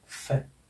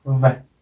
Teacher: फे कंपन मत करो, और वे बोलते समय कंपन करो। वे पोजीशन वही रहेगी दांत की और होंठ की, केवल वे, फे, वे।